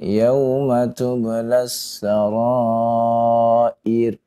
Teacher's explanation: Ra yang di akhir di kalimat tersebut sebelumnya adalah kasroh ya, maka dibaca dengan tipis, jangan ditebalkan ya. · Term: dibaca tipis